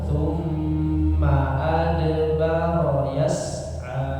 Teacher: Ma-nya pendek langsung disambung